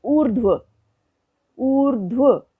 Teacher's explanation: रेफ र लगा तो व के ऊपर है, उससे पहले स्वर रहित ध है और रेफ र का उच्चारण ध से भी पहले हो रहा है